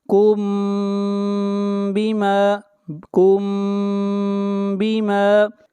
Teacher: میم ساکن کے بعد با ہے تو اخفاء شفوی ہوگا